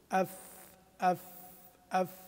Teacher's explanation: وحرف الفاء كما هو معروف يخرج من أطراف الثنايا مع باطن الشفه السفلى